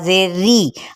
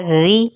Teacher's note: اب یہ را زیر کی وجہ سے باریک آپ نے ادا کرنا ہے، ری۔ حمزہ زبر را، را پیش رو، رو۔